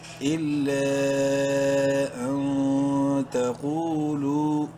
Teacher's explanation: نون ساکن کے بعد تا حروف حلقی میں سے نہیں، اخفا کریں گے نون میں. تا زبر تا، قاف واو پیش کو، قاف کو منہ بھر کے پڑھتے ہوئے ایک الف برابر لمبا کریں گے واو مدہ کی وجہ سے.